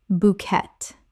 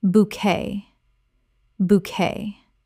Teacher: Two syllables with the t completely silent. This French word kept its original pronunciation.